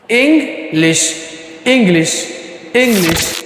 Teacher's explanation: ইং অর্থাৎ আমরা যেখানে প্রনান্সিয়েশন করে থাকে হচ্ছে ইং সেখানে তারা প্রনান্সিয়েশন করে থাকে হচ্ছে ইংই। অর্থাৎ ইং শব্দের শেষে হালকা একটি গ সাউন্ড এখানে যুক্ত করে দিয়ে প্রনান্সিয়েশন করে থাকে